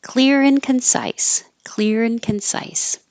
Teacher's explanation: So anytime you have the and in the middle of two things, you can drop drop the D, and when the R connects to the I, it'll sound like an in, clear in. But you're really just making the in sound.